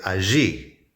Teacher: The Argentinians love to pronounce the double L as je.